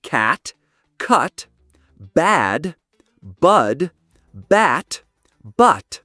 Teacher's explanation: The A sound is more open and forward, like in cat. The sound is more central and lower, like in cut.